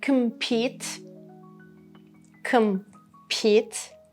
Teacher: The stress is on pete.